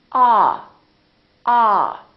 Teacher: your jaw is all the way down and your lips are kind of oval shaped like an egg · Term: ah sound